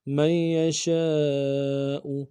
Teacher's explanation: برحمتہ، برحمتہ من یشاء، من یشاء، میم کو یا کے ساتھ ملانا ہے، نون کے ساتھ نہیں ملائیں گے، یا کے اوپر تشدید زور دیں گے، اور شین کے ساتھ الف مدہ ہے، الف مدہ کے اوپر مدہ اصلی ہے، تین الف مدار میں کم سے کم کھینچیں گے، حمزہ کو نون سے ادا کریں گے۔